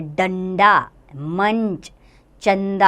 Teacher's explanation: अनुस्वार नासिकीय व्यंजन है, अर्थात इसका उच्चारण नाक से किया जाता है।